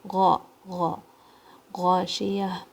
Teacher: غائن کی آواز اپر تھروٹ سے آئے گی آپ کے حلق کے اوپر کی طرف سے. غائن کے اوپر کھڑا زبر ہے 2 کاؤنٹ، اور غائن کو بھاری رکھنا ہے مگر بہت زیادہ بھاری نہیں کرنا ہے، ٹھیک ہے. · شین کی آواز میں تفشی ہوتی ہے، تھوڑی سی اسپریڈنگ ساؤنڈ ہوتی ہے شین کی، لائٹ ساؤنڈ.